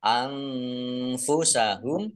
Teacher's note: nun sukun bertemu dengan huruf Fa bacaan Ikfa dibaca samar-samar kemudian humnya Q dan dibaca pendek karena tidak ada tanda panjangnya